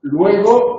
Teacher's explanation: este elemento vocálico que no está en el núcleo de la sílaba es semiconsonante